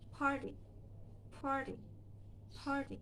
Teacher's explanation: The T between R and a vowel E, so the sound can be flapped. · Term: flap T